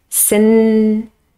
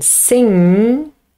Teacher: in sing, the tongue moves back, the tip of the tongue is free, and the closure is right at the back of the mouth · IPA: /ŋ/